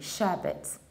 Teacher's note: Sherbet, reducing the ending and pronouncing T, sherbet. In the American accent, we say sherbet, sherbet.